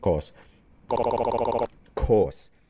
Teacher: he seems to have this unaspirated even happening over the word course